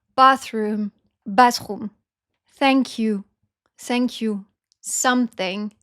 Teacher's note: if it makes the sound th, alors on remplace par s.